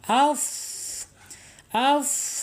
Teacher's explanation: alhams yaitu mengalirnya napas kita ketika mengucapkan huruf Fa